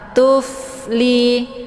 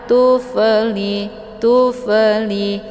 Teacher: Kemudian tufli ini fa sukun. Cara bacanya dialirkan ya dengan bentuk desis angin yang agak samar-samar.